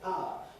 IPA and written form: ˈpaʊə (power)